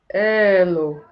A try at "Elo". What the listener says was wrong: Well done.